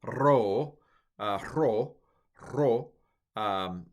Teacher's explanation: Ro should be a little bit trilled.